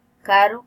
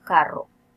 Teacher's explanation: Si hay una fase de cierre, el fonema vibrante es simple, como en el caso de caro. Pero si hay varias fases de cierre, el fonema vibrante es múltiple, como en el caso de carro.